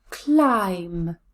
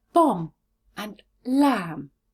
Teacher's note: when the word ends in m b the b is always silent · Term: silent b